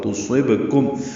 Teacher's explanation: با ساکن پہ قلقلہ ہوگا